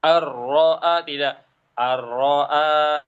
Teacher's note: Ar-ra'a agak ditinggikan suaranya lalu digertak.